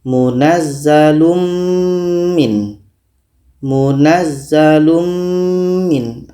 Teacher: mim ini kita dengungkan secara sempurna Kita sudah masukkan tanwin ini kepada mim secara sempurna dan yang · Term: Idam Kamil, idgham kamil